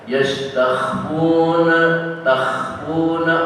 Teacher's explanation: Yang perlu diperhatikan dalam bacaan tadi di antaranya adalah yastakhfuna, takhfuna kha agak bergetar di dalam hidung